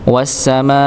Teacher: wawunya langsung masuk pada huruf yang bertasydid yaitu sin